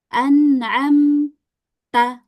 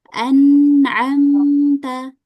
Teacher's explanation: Yang betul kita baca dengan digabung semuanya tanpa ada jeda sedikit pun ya.